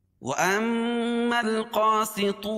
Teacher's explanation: الف لام کے بعد حروف قمری کے 14 حرفوں میں سے قاف ہے، اس لیے یہاں لام پڑھی جا رہی ہے۔ قاسطون، واو ساکن سے پہلے پیش ہے، واو مدہ ہوگا، اس کو ایک الف کے برابر کھینچ کے پڑھیں گے۔